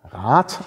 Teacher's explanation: Es gibt das Wort Rat, das wird immer Rat ausgesprochen, also immer mit langem A und T hinten · Das heißt also, da wir Räder haben und Räte, raten oder radeln, kann man halt sehen, zugrunde liegt da offenbar ein D bei Rat, was nur am Wortende zu T wird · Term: Auslautverhärtung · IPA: /raːt/